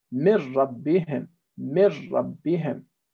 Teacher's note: The residual sound of the noon has disappeared, so there's no ghunna. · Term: idgham bila ghunna